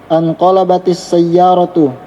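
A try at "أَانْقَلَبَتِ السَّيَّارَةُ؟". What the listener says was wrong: Berubah cara bacanya. Bagaimana kalau bertanya? Intonasi bacaannya, bukan harokatnya. Naik turunnya suaramu itu gimana? Bagaimana kalau orang bertanya? Anqalabatis sayyaratu. Itu kasih tanda tanya. Berarti ada bertanyanya juga muncul.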